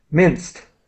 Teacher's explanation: The ed is pronounced in this word like a t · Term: t sound